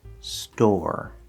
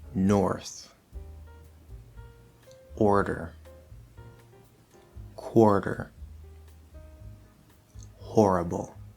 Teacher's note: if you see a word spelled o R and it is a stressed syllable then it will be pronounced with an R colored oh